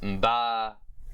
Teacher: Or I guess I would say pre-nasalized bilabial, voiced bilabial plosive consonant, or post-stopped bilabial, voiced bilabial nasal consonant.